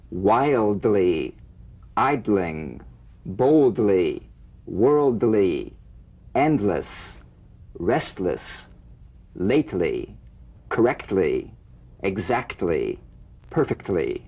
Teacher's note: feel the D or T click even when the L is not sustained because a vowel follows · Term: medial DL, TL